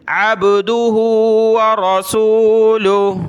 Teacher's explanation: دال پر پیش ہے، بہت سارے پڑھتے ہیں عبدہ، دال پر زبر نہیں پڑھنا، پیش پڑھنی ہے